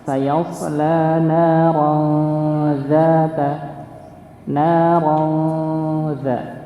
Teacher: Okay. Maka ketika tanwin bertemu dengan huruf dzal, maka dia dihukumi ikhfa. Ya, ikhfa hakiki, maka dia disamarkan.